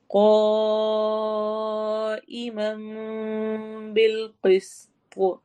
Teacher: قا میں قوف کو موٹا بھی کرنا ہے، لمبا بھی کرنا ہے